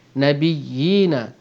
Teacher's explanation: Kadar panjang mad tamkin ialah seperti mana mad asli, 2 harakat. Jadi kalau kita baca Nabiyina, pastikan kita panjangkan 2 harakat kerana ia mad.